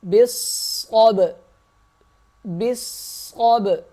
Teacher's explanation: با صاد زیر بس، صاد با زبر صب، با صاد زیر بس، صاد با زبر صب، صاد موٹا ہوگا، با پہ قلقلہ کیا جائے گا